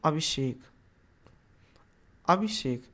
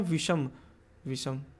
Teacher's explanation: अगर स्वर के बाद दंत श आता है तो उसको हम मूर्धन्य श में परिवर्तित कर देते हैं